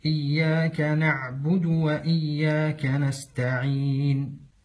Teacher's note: ومن الأخطاء القلقلة في حرف العين نعبد أو حبس الصوت فيه نعبد، والصحيح أن يكون فيه جريان للصوت مع صفة التوسط بدون قلقلة